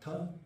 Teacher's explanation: you have the T of the teeth